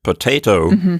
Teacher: more emphasis potato but in addition to giving it more emphasis also the pitch of my voice is going up slightly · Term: stress Accent